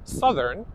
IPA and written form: ˈsʌðərn (Southern)